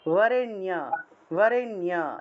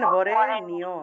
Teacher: নিয়টা এরকম বলা যাবে না, নি এবং অ আলাদা আলাদা উচ্চারণ করা যাবে না, একসাথে বলতে হবে।